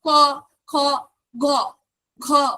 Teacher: তাহলে এবার এই যে তুমি ক উচ্চারণ করো, ক, খ, গ, ঘ, ঠিক আছে, অর্থাৎ ক উচ্চারণ করছে আমাদের কণ্ঠস্বর কিন্তু ঠিক আছে নর্মাল, খ উচ্চারণ করছি একটু চেঞ্জ হচ্ছে, গ, ঘ যখন উচ্চারণ করছি তখন কিন্তু আমাদের কণ্ঠস্বরের ঘর্ষণ আসছে একটা, যার ফলে এগুলোকে কিন্তু বলা হচ্ছে ঘোষ ধ্বনি।